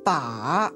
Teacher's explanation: The third falls and then rises.